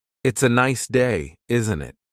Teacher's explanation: The tone going up at the end tells the listener that you're asking a question. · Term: intonation